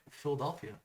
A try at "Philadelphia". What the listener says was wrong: You like put an O in there.